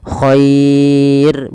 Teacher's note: ro-nya ini tidak boleh ditebalkan tapi dibaca dengan tipis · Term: ro tarqiq